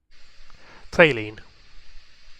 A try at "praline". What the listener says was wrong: You say praline and not praline? It's praline. the pray? Where is the pray sound in praline? That's pra.